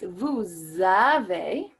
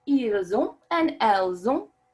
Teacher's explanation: those S's are pronounced as Z's in English to create that beautiful liaison